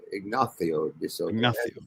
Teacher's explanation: In Spain, don't forget in Spain the TH sound replaces the S's.